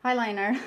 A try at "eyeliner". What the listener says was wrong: Eyeliner, she pronounces highliner. She adds an H.